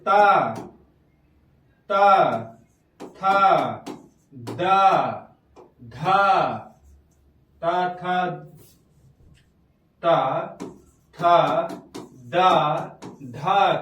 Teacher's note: ता, था, दा, धा किससे बोले जाएंगे? आपके दंत से बोले जाएंगे।